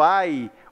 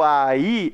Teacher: quando eu falo aí eu falo a e eu falo só separado então quando termina em duas vogais e o som dessas duas